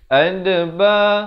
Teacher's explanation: sekali lagi kita jumpa qalqalah huruf dal di sini, berikan lantunan